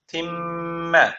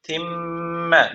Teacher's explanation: mim harfi şeddi almış ne yapılacak bir elif miktarı tutulacak